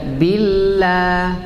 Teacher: Ada tebal dan tipis. Kalau lafzul jalalah sebelumnya harakat kasrah seperti sekarang, bi ba kasrah, jadi tipis.